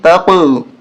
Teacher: قاف پہ قلقلہ کریں گے، آواز ٹکرا کر واپس آئے گی، قاف کی 2 دفعہ آواز نکلے گی